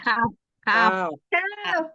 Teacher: Ujung lidah bertemu dengan langit-langit bagian keras